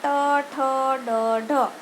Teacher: મૂર્ધન્ય એટલે મૂર્ધામાં ગળાની થોડાક અંદરનો ભાગ છે ને તાળવાની પાછળનો ભાગ એમાં હવા અવરોધાય